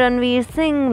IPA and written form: rəɳˈʋiːr sɪŋ (Ranveer Singh)